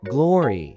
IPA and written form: ˈɡlɔːri (glory)